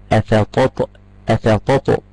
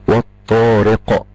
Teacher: سكون عارض للوقف عارض ل للوقف يبقى القاف عليها سكون تقلقل القلقله هي ذبذبه تميل الى الفتح